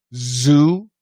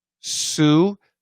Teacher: The thing to remember is if you can see me, zoo, sue, the shape of the mouth, the shape of the tongue, the placement of the tongue, everything's the same. The Z and the S, the same exact placement of the mouth, the lips, the tongue. The difference is vibration.